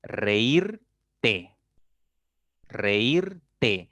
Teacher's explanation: voy a tener una palabra de 3 sílabas y la mayor fuerza va a estar en la segunda